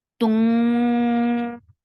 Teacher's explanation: while making ikhfa, you will keep the tongue up and keep the sound in your nose too. Tung, and qa will be 2 counts long. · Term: heavy ikhfa